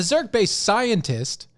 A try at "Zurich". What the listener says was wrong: No, you said Zurk. Yeah, see, you said it fast. It sounds like you said Zurk.